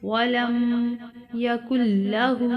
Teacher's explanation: ولم یکن لہ، الٹا ہا ہے، الٹا پیش ہے ہا کے اوپر، اس کو تھوڑا سا کھینچ کر پڑھیں گے